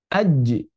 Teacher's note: ketika kita menahan laju udara di tengah lidah yang disentuhkan dengan langit-langit, keluarlah huruf jim, aj. Maka berarti jim syiddah.